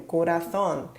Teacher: a última sílaba é a tônica que está terminando em N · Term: aguda